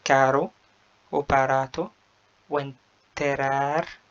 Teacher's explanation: ولو وقعت في نصف الكلمة أو آخرها نطقت راء مخففة، يعني لو حرف R دوت وقع في نص الكلمة هنطقها راء عادية زي الراء العربية